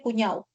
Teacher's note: elisión de la consonante oclusiva dental sonora. O sea, en lugar de percibir, por ejemplo, la palabra cuñado, se percibe cuñado.